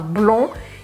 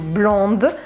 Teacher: em francês a gente não fala esse D se for no masculino, então eu falo blond, e se for no feminino, blonde.